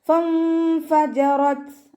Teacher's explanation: റോ ഫതഹ ആയതുകൊണ്ട് നമ്മൾ ഉയർത്തിയിട്ട് ഉച്ചരിക്കുക. താക്ക് സുക്കൂനാവുമ്പോൾ കുറച്ച് എയർ പുറത്തോട്ട് പോകണ സൗണ്ട് കൊടുക്കുക